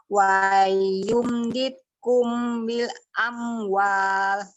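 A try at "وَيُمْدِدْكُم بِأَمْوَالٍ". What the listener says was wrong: Oke, tapi mim ketemu ba kan tanggung tadi. Ikhfa ya.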